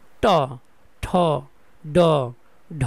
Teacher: জিহ্বাটা দাঁতের গোড়ার আরও একটু উপরের অংশে লাগতেছে, এই জন্য এদেরকে বলা হয় মূর্ধন্য বর্ণ।